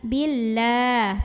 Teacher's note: Maka lah tipis, billah pangkal lidah datar ya. Kemudian di sini ada alif lam, namanya alif lam syamsiyah karena ada alif lam yang ketemu huruf syamsiyah yaitu lam. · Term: tarqiq